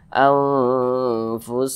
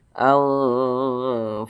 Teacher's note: maka cara bacanya itu disamarkan kemudian didengungkan jadi karena dia ini ausat di tengah-tengah maka dengung dan samarnya itu seimbang anfusakum seperti itu didengungkan n kita tahan kita panjangkan suaranya sejenak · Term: ikhfa Hakiki ausat